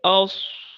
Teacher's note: اگر دباؤ پیدا کر لیا اور خود زور لگایا تو دانتوں کے درمیان جو فاصلہ ہوتا ہے، جو سوراخ ہوتا ہے جس سے گزرتے وقت سانس نے گزرنا ہے، سیٹی والی آواز پیدا ہوتی ہے، وہ آپس میں جڑنے کی وجہ سے بند ہو جاتی ہے، تو دبی دبی سی سیٹی پیدا ہوتی ہے جو کہ صحیح نہیں ہوتی۔